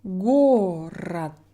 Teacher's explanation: what happens if we have our letter O after the stressed syllable? Город. My O in this position is also a schwa sound.